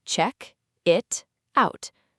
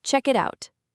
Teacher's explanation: Then the t sound at the end of it slides over to the vowel o in out. In American and natural casual English, that t even softens into a quick d sound. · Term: connected speech